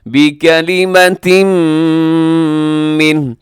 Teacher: ان اللہ یبشرک بکلمۃ من، بکلمتم یہاں بکلمتن پہ تنوین ہے، تنوین کے بعد میم، حروف یرولون میں سے ادغام ہے غنے کے ساتھ